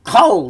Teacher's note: the kamat changes to a short O sound in an unaccented, closed syllable, usually the first.